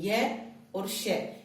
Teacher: ये और श, इनका उच्चारण स्थान क्या हो जाएगा, तालु हो जाएगा।